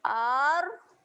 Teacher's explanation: Hamzah baris atas bunyi A. Berjumpa dengan huruf ra sabdu. Doublekan bunyi huruf R.